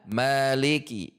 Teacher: Huruf kaf tidak perlu dibaca dengan terlalu banyak udara. Maliki biasa saja.